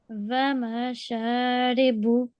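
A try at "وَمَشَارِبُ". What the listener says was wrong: Much better. Make sure you don't do prolong on the short strokes, okay?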